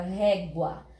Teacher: Quando as duas vogais ficam juntas, eu tenho um ditongo. Às vezes tem palavras que a gente fala e o U quase não aparece. Aparece mais o som do A. Então, nesse caso, a letra A ficou mais forte, mais audível.